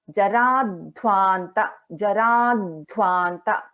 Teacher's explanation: Dha is a mahaprana and there is a dvitvam also for dha.